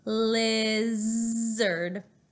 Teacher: our tongue comes forward when we say the L at the beginning of the word lizard but then let's remember to keep our tongue back for our Z